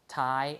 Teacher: you see the aspiration which means that you have a puff of air